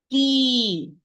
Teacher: Tip of the tongue with the alveolar ridge behind the upper central incisor. If you make the tip of the tongue meet the inner part of the upper central incisor, you pronounce it like with the sin and the sheen or the ha. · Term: the Arabic ta